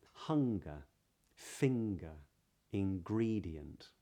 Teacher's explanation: So when you get an NG in the middle of a word, in this accent, it's typically pronounced with an NG followed by a G sound